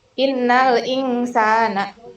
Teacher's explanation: Termasuk bacaan ikfa hakiki karena ada nun sukun bertemu dengan sa. Cara bacanya samar dan dengung 3 harokat.